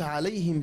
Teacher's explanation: the non-prolongation ya comes from the middle of the tongue and the mouth